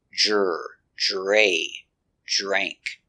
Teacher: remember, it's not dr, it's jr. Make a voice with your R's.